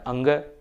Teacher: अंग का उच्चारण स्थान कंठ भी है और नासिका भी है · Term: अनुनासिक वर्ण